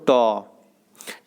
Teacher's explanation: अघोष बोलते हैं जिसमें कंपन नहीं हो